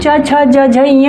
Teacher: च, छ, ज, झ, ञ जो है वह आपका तालु से उच्चारित होता है